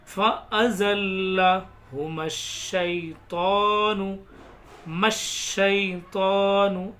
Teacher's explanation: میم کو ڈائریکٹ شین میں ملائیں گے